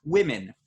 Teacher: The first vowel in women is I. like we said earlier, like kit and it and Tim. But it's spelled with an O.